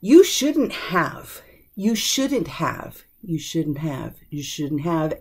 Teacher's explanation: sometimes that H gets dropped